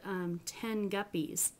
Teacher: you actually go all the way back and it becomes an ng sound instead of a N sound.